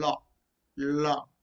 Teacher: air escapes through sides of the mouth for example law law okay the tongue touches the top of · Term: laterals